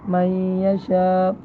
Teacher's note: من یشاء میں ہم نون کی تھوڑی بہت آمیزش باقی رکھیں گے، یعنی یہ معلوم ہو یہاں پر نون موجود ہے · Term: ادغام ناقص